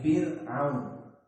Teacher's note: Sebelumnya fi kasrah, maka dia ra-nya muraqqaqah.